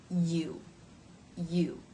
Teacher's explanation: you may find that the lips start to form that tight circle of the vowel o even as you're making the Y consonant sound